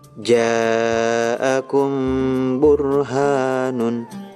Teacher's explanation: Ikhfa syafawi. Setiap mim sukun bertemu dengan huruf ba dibaca samar disertai dengung.